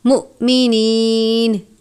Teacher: مؤمنین، حمزہ اور جزم ایک ساتھ ہے، حمزہ ساکن ہے، لفظ کو جھٹکا دے کر پڑھیں گے مؤمنین، اس طرح سے۔